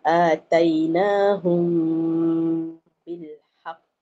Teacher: Mim mati bertemu ba. Dengung dua harakat. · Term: ikhfa syafawi, Ikhfa Syafawi